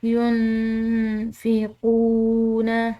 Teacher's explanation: واو ساکن ہے تو ایک الف کے برابر اس کو ہم نے کھنچاؤ دے کر ادا کرنا ہے